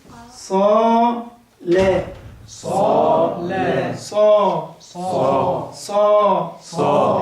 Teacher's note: إن الصاد من حروف التفخيم، بعدها ألف مفخم زيها صا. صا مش أقول لك صا صا، ما تجيش أبدا، مش ممكن تيجي الألف مرققة هنا.